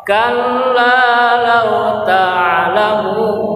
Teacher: panjang 2 harokat karena mad tabi'i. Alasannya wawu sukun setelah koma.